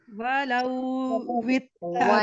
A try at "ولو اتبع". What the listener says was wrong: ولو वाव के ऊपर जबर है, लाम के ऊपर भी जबर है, तो आप इसको जबर के साथ पढ़िए, कंफ्यूज ना हो। ये हरूफे लीन नहीं है, वलव नहीं होगा, वलवित होगा। वलवित तबअल हक़